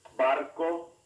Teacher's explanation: most spanish speakers pronounce the letters b and v alike similar to the b sound in the english word cabbage